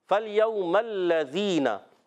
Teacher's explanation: ज़ाल का मखरज है, ज़बान का सिरा ऊपर के दांतों के नूनी किनारे